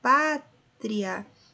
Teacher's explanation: Então, se eu tenho primeiro uma semivogal e depois uma vogal, eu tenho um ditongo crescente. Veja só, o pátria, eu tenho primeiro a semivogal e depois a vogal.